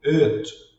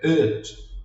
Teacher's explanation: Nós vamos ver mais à frente, mas nesse caso aqui, geralmente todo mundo vai falar como i, e que na verdade não é um i, é como se fosse um e, it, não é it, é it.